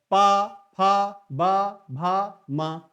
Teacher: प वर्ग का उच्चारण ओष्ठ से होता है